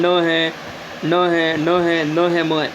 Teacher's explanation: देखते हैं अगली स्लाइड में हम, देखिए यहाँ पे जो नासिक है, यानी जो नाक से बोले जाते हैं, हमारे जो नाक से जो ध्वनि निकलती है, जैसे न है, न है, न है, न है, म है, इन वर्णों को हम बोलते हैं तो हमारा जो नाक है वह कंपन करता है · इनको हम बोले तो ये हमारी जो नाक जो होती है उस पर एक झंझनाहट होती है